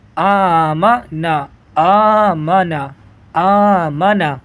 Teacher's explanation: میم کو نہیں بڑھائیں گے، بس حمزہ کو بڑھائیں گے۔ اگلا حرف نون زبر نا، ملائیں گے آمنا، آمنا، آمنا۔